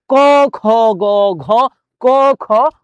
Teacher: কন্ঠ থেকে উচ্চারণ হচ্ছে কন্ঠনালী থেকে উচ্চারণ হচ্ছে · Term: কন্ঠ ধ্বনি, কণ্ঠধ্বনি